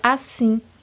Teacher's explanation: podemos ver que o sim, ela continua sendo por maior tempo mais pronunciada. Então, a gente sabe que é uma sílaba tônica.